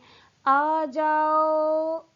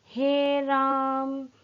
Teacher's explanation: ये जो खींच के स्वर को बोला जाता है, यही पलुत स्वर होता है